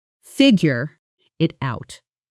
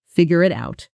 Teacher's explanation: Figure it out often becomes figure it out in fast casual speech with the second syllable of figure almost disappearing